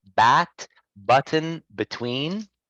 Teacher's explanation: the sound is voiced the vocal chords vibrated while producing it